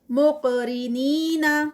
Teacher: درمیان میں قاف اور ایک تو ہیوی ہے اور پھر اس کا قلقلہ ہے. را یہاں پہ لائٹ ہوگا.